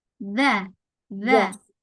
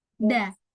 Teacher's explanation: Kalau yang ada titiknya di ujung gigi dza. Dza. Tapi kalau yang enggak ada titiknya dia yang dekat gusi yang pangkal da.